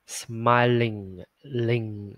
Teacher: Lưu ý là đuôi ng là ngân lên nè, đó, ngân lên nè. Smiling, ling, ngân ở đây ha.